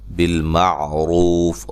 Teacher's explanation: را کو موٹا ادا کرنا ہے